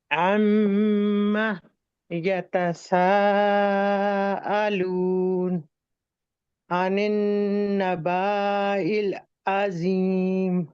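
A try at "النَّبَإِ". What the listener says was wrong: با کو نہیں کھینچیں گے، نبائل، نبائل۔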